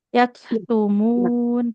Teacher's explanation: huruf kaf sukun. Nah, pastikan mengalir. Bukan suara nafas ya. Ya, ya, Yaktumun.